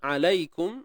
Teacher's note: La ini bacaan lin lah. Bacaan lunak lembut kan. Ya yang sukun sebelumnya baris atas.